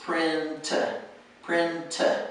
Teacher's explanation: you have to have the T sound, yes, but you don't necessarily want it to be 2 syllables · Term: 1 syllable